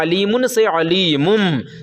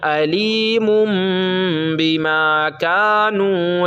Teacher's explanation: اس نون ساکن کو میم ساکن سے بدل دیں گے اور غنہ بھی کریں گے، تو اب ہو جائے گا علیمن سے علیمم۔